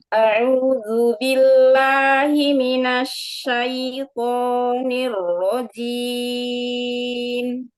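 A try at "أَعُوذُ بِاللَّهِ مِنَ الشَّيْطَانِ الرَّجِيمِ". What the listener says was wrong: Huruf hamzah di awal diringankan. Tinggal buka rahang aja karena dia makhrajnya dari pita suara. A'udzu. Sambung.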